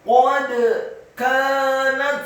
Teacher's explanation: kafnya dibaca tipis fathah dua harokat karena setelahnya ada alif. Nunnya dibaca tipis fathah satu harokat, taknya dibaca sukun dan ada hamznya.